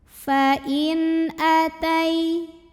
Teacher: bertemu dengan huruf halqi atau huruf tenggorokan yaitu hamzah. Maka nun sukun ini kita bunyikan dengan jelas.